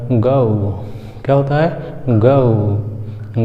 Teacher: गा और छोटा ऊ मिलके गौ